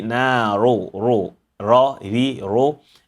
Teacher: when ra is dhamma, we apply tafkhim, heaviness to the sound.